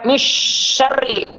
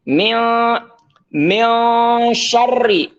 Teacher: Jadi tanpa tasydid dengan mempertahankan gunnah. Gunnahnya dipertahankan, tapi seakan-akan tidak ada tasydidnya. Jadi tidak dimasukkan ke shin. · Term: ikhfa